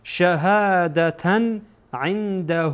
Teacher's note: بعد از نون ساکن در اینجا دال آمده، دال از حروف اخفا هست، اخفا میشه